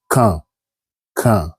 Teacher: D at the end here is mute. You don't pronounce the D at the end. So you said quand, quand, because Q, U sounds que, que.